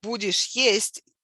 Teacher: tone rises sharply on the stressed word